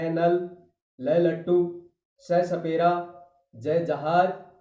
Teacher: बच्चे का मतलब ही आपको मैंने बता दिया कि ऊपर के जो दांतों के जो मसूड़े हैं उनको हमारी जीभ है वो बार-बार उनको छूती है। दांतों से थोड़ा सा ऊपर और मसूड़ों के साथ जीभ के स्पर्श से ये व्यंजन बोले जाएंगे। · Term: वत्स्य व्यंजन